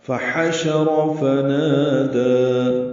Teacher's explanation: فحشر اور فنا یہاں تک ساری زبریں ہیں. ہا وسط حلق سے ادا ہوگا، را پر پڑھیں گے